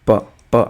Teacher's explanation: आप प का उच्चारण करेंगे तो आपको होट टच होंगे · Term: ओस्ट